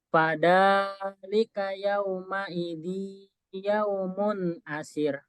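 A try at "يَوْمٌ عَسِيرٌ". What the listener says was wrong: Asir, panjang.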